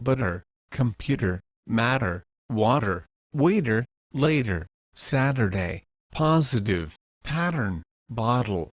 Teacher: your tongue needs to Flap up to the bottom Ridge of your upper gums this is the same position as the plosive or American te sound however in this case all you need to do is flap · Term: soft D